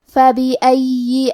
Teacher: کلمت فبأي میں فا پہ زبر ہے، با کے نیچے زیر ہے اور الف پہ زبر ہے، تو ہم یہ تینوں حرکات کو ظاہر کریں گے۔ یا پہ تشدید ہے تو ہمیں دو حرف کے برابر یا کو پڑھنا ہے